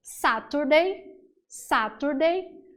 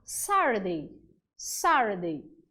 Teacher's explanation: o inglês americano, que é aquele que a gente coloca o som de R nas palavrinhas que tem T e D.